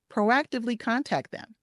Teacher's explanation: See how when I said it a little faster, I dropped one of those T's because contact ends with a T. Them begins with a T.